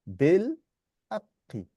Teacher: So it's bil haqqi. So make the qaf stronger. It's double. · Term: shaddah